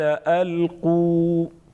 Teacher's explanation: الف مدہ ایک الف کے برابر کھینچیں گے